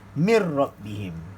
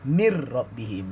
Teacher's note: Tak ada bunyi nun. Mir rabbihim. Nun dah masuk dalam huruf ra. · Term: bila gunnah